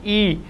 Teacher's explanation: जब ई का उच्चारण होता है तो जो हवा है वो तालु स्थान पर टकराती है। ई जीभ का आगे का हिस्सा है वो हवा को बाहर आने से रोकती है।